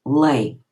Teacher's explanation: na sinerse a contração dá-se em ditongo. As duas vogais passam a escrever-se, a dizer-se como um ditongo. Lé, que hoje atualmente se diz lei.